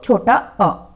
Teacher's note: मध्य या केंद्रीय स्वर, मध्य मतलब बीच, मिडिल। जीभ जिन स्वरों के उच्चारण में जीभ के बीच का हिस्सा उठता है उसे कहेंगे मध्य या केंद्रीय स्वर।